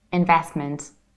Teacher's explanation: in fast speech, you can skip middle T and you can say investment in both British and American accent.